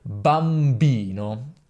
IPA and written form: bamˈbino (bambino)